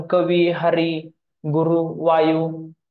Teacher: इकारांत उकारांत शब्द मराठीत दीर्घांत उच्चारले जातात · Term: दीर्घ उच्चार